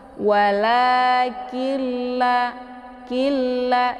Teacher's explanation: Kemudian " killa", ada nun sukun yang bertemu dengan lam dengan tashdid. Cara membacanya adalah dengan memasukkan nun ke dalam bunyi lam . Karena nun sukun yang bertemu dengan lam dengan tashdid disebut idgham bila ghunnah. · Jadi masukkan Nun tanpa bersenandung. Untuk membacanya, cukup tekan dan langsung ke la.